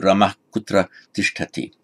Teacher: No sandhi to be applied. The ah before the ka remains unchanged.